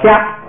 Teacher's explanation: 这个卡呢，先变成高调是掐，再变成不送气是加